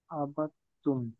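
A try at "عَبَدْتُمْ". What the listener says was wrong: হ্যাঁ, আবাত্তুম দালের উচ্চারণটা হবে না, কারণ তাসদিদের ডানে যদি জজম আসে সেক্ষেত্রে সেক্ষেত্রে জজম বাদ দিয়ে তাসদিদকে পড়তে হয়। তো এইখানে তাসদিদটা দেখবো ঠিক আছে, কিন্তু এটা পড়ার মাঝে কোনো প্রভাব নেই এর। আবাত্তুম তখন হবে আবিদুম মা আবাত্তুম।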